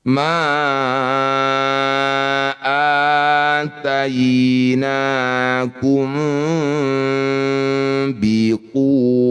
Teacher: kalau mim sukun bertemu ba itu rapat tapi masih ada celah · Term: ikhfa syafawi